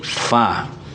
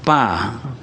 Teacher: fa itu bertemunya dua bibir atas itu, dua gigi yang di atas itu dengan bibir bawah. Jadi fa. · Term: huruf fa